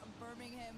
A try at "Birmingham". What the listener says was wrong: You don't pronounce the G. It's not Birmingham. It's Birmingham.